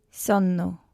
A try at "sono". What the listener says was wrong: See, just watch the last one again. It's not sonno. It's only one N. Sono.